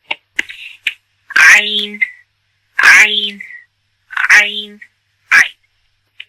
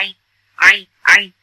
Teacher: ये साउंड सिर्फ और सिर्फ गले के बीच वाले हिस्से से आ सकता है, मिडल ऑफ योर थ्रोट